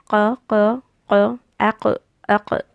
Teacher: You have to use the deepest part of the tongue, which it should touch up on the roof of the mouth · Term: qaf